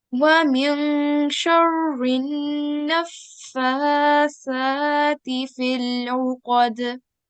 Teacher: we have no lam. So we'll just be joining the ra mushaddad to the noon mushaddad